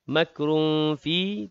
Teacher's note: tanwin bertemu dengan fa, ikhfa hakiki juga dengung 2 harakat